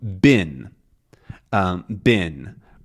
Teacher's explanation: the eh sound before an N or an M can become exactly the same as an I like sound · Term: pin pen merger